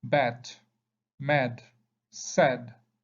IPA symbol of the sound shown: æ